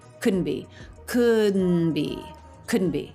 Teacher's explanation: T dropped right from n smoothly into B with no break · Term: no tea at all